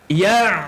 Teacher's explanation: huruf ain duduk tengah kerongkong kan